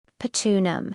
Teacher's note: the Thai language doesn't have the TR sound cluster in the same way, so it might be simplified to a T sound, patronum, and again you'll hear that beautiful rising pitch, especially on the final syllable, patronum.